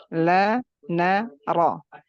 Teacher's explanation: Berarti angkat pangkal lidah dan lisan tuh jangan menjauh dari langit biar getar takrir pada ro itu nggak berlebihan dan juga nggak hilang. Jadi ingat makhraj huruf ro itu di belakang makhraj huruf lam dan nun. Jadi lam terasakan lam itu sisi lidah hampir menyentuh sekitar 6 gigi kita.